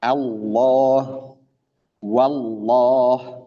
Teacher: Lam yang dibaca tebal. yaitu pada lafzun jalalah Allah. Nah, di situ lamnya tebal. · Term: lam taglidh